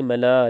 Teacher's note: لام پہ مد کریں گے، بڑی مد ہے، اس کو زیادہ لمبا کریں گے